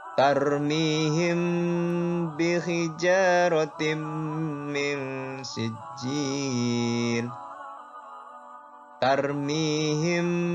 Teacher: pada mim sukun kali ini bertemu dengan huruf ba. Maka hukum bacaannya adalah ikhfa syafawi. Samar ya.